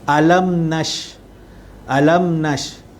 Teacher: maka hukumnya adalah izhar syafawi, yang mana dia jelas dan terang dan tidak dengung